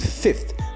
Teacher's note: the second fricative of a fricative fricative cluster is replaced by the corresponding stop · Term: fricative consonant cluster